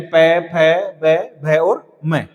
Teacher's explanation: ओष्ठ स्थान ओष्ठ वर्ण में उ पय वर्ग यानी प, फ, ब, भ और म, ये ओष्ठ वर्ण आते हैं। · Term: ओष्ठ्य वर्ण